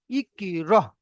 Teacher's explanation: ঠিক আছে, তো এই হামজার উপরে সাকিন মানে সাকিন যুক্ত হামজাকে একটু ঝাটকা দিয়ে পড়তে হবে, ঝাটকা দিয়ে বা ধাক্কা দিয়ে